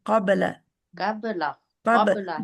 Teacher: قبل باریک ہے، اس کے لیے منہ اپنا اسمائلی کر دیں گے، قبل قبل قبل قبل با کے اوپر پہنچتے ہی آپ کی اسمائل آ جانی چاہیے، قب کا موٹا ہے قب، ٹھیک ہے، جو ٹھیک ہے حرف موٹا ہے اس کے ساتھ باقی سبھی کو نہیں موٹا پڑھ دینا، اچھا.